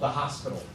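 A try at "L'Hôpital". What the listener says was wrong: There's no S. It's hospital.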